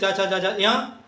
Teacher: इन वर्णों का उच्चारण स्थान होता है तालु। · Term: तालव्य वर्णों